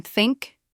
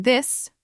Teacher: The voiceless one like in think where you just blow air out with your tongue between your teeth and the voiced one like in this where you add a little vibration with your vocal cords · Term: two distinct th sounds